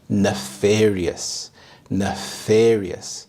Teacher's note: The stress is on the second syllable